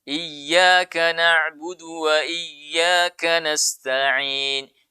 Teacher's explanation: Jadi berikan tekanan saja. Tapi jangan berikan dengungan.